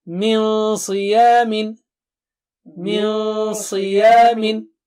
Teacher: Sad is high, very thick and high, so Noon Sakina will be also very thick and high.